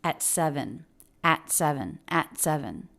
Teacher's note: at seven at seven okay so the word at often reduces to the schwa sound she doesn't do that she does have an a vowel but it still said very quickly at at at at and the T here is a stop T because the next word begins with the consonant · And the T here is a stop T because the next word begins with a consonant.